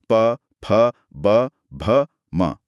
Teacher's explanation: होंठ आपस में नहीं मिलेंगे तो ये आवाजें नहीं बनेंगी। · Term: प वर्ग